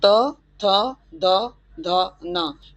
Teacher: यह आपके दांतों के किसी पिछले हिस्से को स्पर्श करते हुए निकलते हैं।